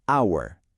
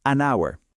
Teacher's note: aunque estamos viendo una H, esa letra es muda en esta palabra. No la pronunciamos. El primer sonido que realmente hacemos es el de una vocal, hour.